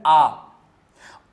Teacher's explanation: जब मुख सबसे बड़ा खुलता है, सबसे ज्यादा जब खुलता है, वह कहलाता है विवृत्त